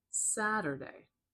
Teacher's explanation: Can you hear how it's higher pitched and a little bit louder and longer at the beginning? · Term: primary stress